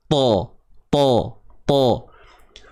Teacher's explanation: Hujung lidah berada di gusi sebelah atas, di bahagian pangkal gigi tu, tempat tumbuh gigi atas ni. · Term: makhraj bagi huruf ta